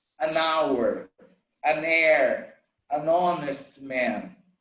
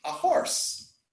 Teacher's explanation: the H in certain words, it's silent. It's not pronounced.